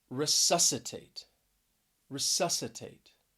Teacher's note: stress is on that second syllable and this is a four syllable word